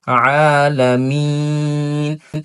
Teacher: গলার মধ্য থেকে সুন্দর আইন উচ্চারণ করতে হবে